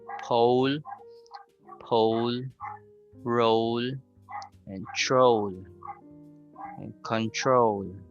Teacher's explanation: You begin with the O sound and you end with the U. So O. So there's the movement of the W sound. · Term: long O sound